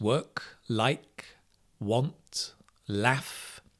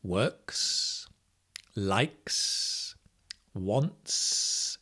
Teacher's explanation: there are other consonants at the end of verbs that are unvoiced, like work. There's no voice.